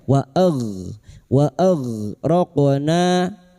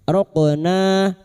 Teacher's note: Wa raqna, qaf sukun, huruf qaf yang mati asli di tengah kalimat qalqalah sugra